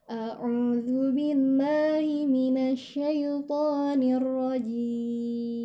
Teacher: Ini harus lebih hati-hati karena sifat jim ini tidak boleh ada angin yang keluar. Jadi kalau kita taruh tangan kita di depan mulut, maka tidak ada angin yang keluar. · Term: huruf jim